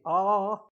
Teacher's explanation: But when I say ah, it's an open vowel because the mouth is open and the tongue is low